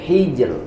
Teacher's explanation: ro dibaca tipis apabila ro sukun sebelumnya sukun sebelumnya lagi kasrah